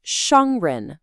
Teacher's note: We have a first tone followed by a rising second tone. So the first part is high and flat and then the second part ren goes up almost like they're asking a question.